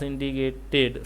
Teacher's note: The stress is on the second syllable dict.